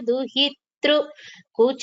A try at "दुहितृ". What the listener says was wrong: We don't pronounce it as Duhitru. There is no t and ru there. R. So the swara, right? A, I, E, U, U, R. So this is plus R, tr, Duhitru. The slight difference, Bhagini. Very subtle difference.